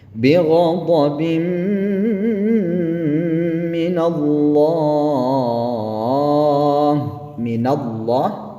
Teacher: ketika dia berharokat fathah ya, maka dia ditebalkan kalimat Allahnya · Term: dibaca tebal